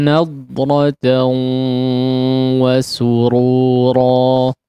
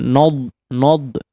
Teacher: Fawaqahumullahu syarra dzalikal yaumi wa laqahum nadratan wa surura. Ya, huruf dhad di sini jangan mempengaruhi huruf nun, ya. Na tetap fathah